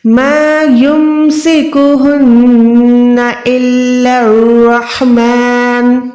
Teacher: لام مشدد ہے، را مشدد ہے، تینوں کو آپس میں ملا کے ادا کریں۔ · وقف کریں گے تو نون پیش نون ساکن میں تبدیل ہو جائے گا۔